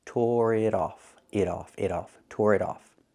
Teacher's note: The T in it is a fast T because it's between vowels.